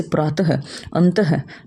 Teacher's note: विसर्ग का उच्चारण करते समय ह की ध्वनि बाहर निकलती है